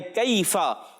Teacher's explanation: जबान की जड़ और तालु के सख्त हिस्से से काफ किताब वाला अदा होता है